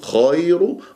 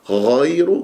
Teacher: يجري فيها الصوت لا يجري فيها النفس لانها مشتركه في نفس المخرج مع الخاء في اذن الحلق والخاء يجري فيها صوتها النفس فتقول خير غير